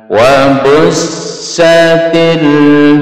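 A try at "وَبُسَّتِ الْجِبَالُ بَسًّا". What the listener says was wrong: sinya di double. ditahan.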